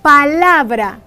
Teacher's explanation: la sílaba tónica de esta palabra es la porque en ella se hace más fuerza al pronunciarse dicha palabra